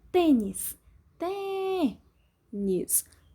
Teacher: Som mais forte é o T, som fechado, acento circunflexo.